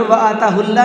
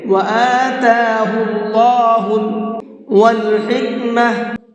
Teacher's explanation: وَآتَاهُ اللَّهُ، اللہ کے لام کو یہاں پر منہ بھر کے پڑھیں گے، اس لیے کہ یہاں پر اللہ کے لام سے پہلے پیش ہے، اور اللہ کے لام سے پہلے پیش ہوتا ہے تو وہاں پر اللہ کے لام کو پر کر کے پڑھتے ہیں، منہ بھر کے پڑھتے ہیں